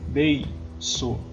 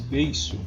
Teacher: Após ditongo tem som de S, beiço. Então vou botar C cedilha.